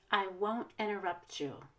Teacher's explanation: I'm going to stress won't because it's a negative and interrupt because it's a verb